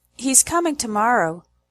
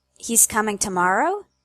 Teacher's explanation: you can hear that the statement has a falling tone and the question has a rising tone.